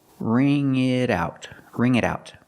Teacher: the T and it changes to a fast D because it's between vowels